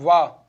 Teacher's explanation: जो दांत और होठों से उच्चारण किए जाते हैं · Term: दंतोष्ठ